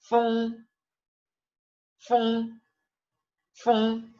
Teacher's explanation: Es la E, pero nasal.